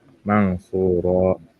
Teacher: Cara baca ya ikhfa hakiki itu didengungkan ya sepanjang dua harakat satu alif. Untuk contohnya ya, di gambar sini didengungkan mang suro seperti dihilangkan maknya itu.